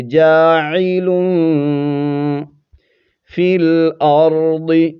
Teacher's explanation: کیونکہ یہاں پر نون تنوین کے بعد آگے حروف اخفا میں سے فا ہے تو اخفا کریں گے، آواز کو ناک میں چھپائیں گے، جاعل فی الارض، ضاد کو موٹا پڑھیں گے، را کو بھی پر پڑھیں گے